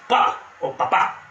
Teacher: sonido de la explosión de la P en papá